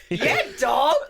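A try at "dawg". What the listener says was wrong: No, I'm not like D-O-G, like D-A-double.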